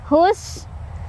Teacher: Hus, sinnya punya sifat hamas dan sofir. Hamas ada angin keluar, sofir ada desisan